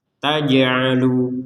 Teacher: Yang perlu dijelaskan di sini ada jim sukun harus kita pantulkan. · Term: pantulan